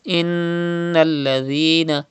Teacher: So it is noon mushaddad, and noon mushaddad is pronounced with gunna